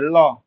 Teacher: ল, দেখো এইখান থেকেও হাওয়া বার হবে, এখান থেকেও হাওয়া বার হবে, জিহ্বার দুপাশ দিয়ে হাওয়া বার হবে। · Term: পার্শ্বিক ধ্বনি